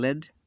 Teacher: as liquid l sound as in lead and a light is formed by letting the air flow around the side of the tongue as the tip touches